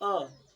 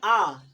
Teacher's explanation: जब छोटा बोला था अ, और इसको बोलने पे आ, थोड़ा सा पावर लग रहा है, थोड़ा समय लग रहा है। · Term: दीर्घ